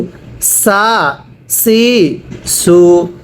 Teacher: এই সিনটা চিকন করে উচ্চারণ করতে হবে